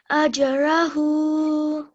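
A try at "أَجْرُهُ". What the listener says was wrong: Ajruhu. Be careful not to make this jim sound as if it's got a fatha, okay? It mustn't sound like ajja, okay?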